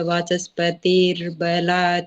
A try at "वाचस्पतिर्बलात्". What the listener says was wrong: हाँ जी, वाचस्पतिर बला, बस उसको थोड़ा लंबा कर दे, बाकी ठीक है।